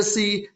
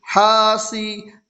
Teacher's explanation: سین کے نیچے زیر کی حرکت ہے، زیر کو جلدی پڑھیں، تھوڑا بھی نہ کھینچیں۔